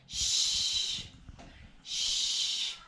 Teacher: So puff of air is coming out of my mouth. This is unvoiced.